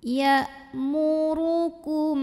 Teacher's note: mim sukun ini kita bunyikan dengan izhar atau jelas. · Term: izhar syafawi